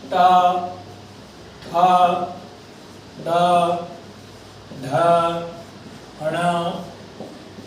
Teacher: एषां वर्णानाम् उच्चारणस्थानं मूर्धा अस्ति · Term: मूर्धन्यवर्णाः